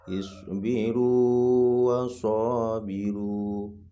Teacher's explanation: waw sukunnya tetap dibaca panjang